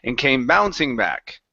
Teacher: Let's go to and came bouncing back. So here you had emphasized the word bouncing, okay, and pushing up on bouncing and coming down on back